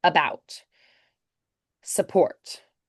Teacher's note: we're going to turn the unstressed syllables to that kind of neutral schwa that's similar to American English